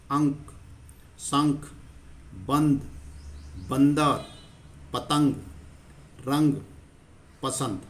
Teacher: जब इसका हम उच्चारण करते हैं तो जो बिंदु के कारण इसकी आवाज नाक से निकलती है और झटके के साथ बोला जाता है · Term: अनुस्वार